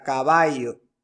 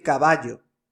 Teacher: El yeísmo consiste en pronunciar la doble L como Y, como por ejemplo la palabra caballo, pronunciarla como con Y, caballo, ¿vale?